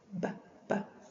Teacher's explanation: bilabial is with both lips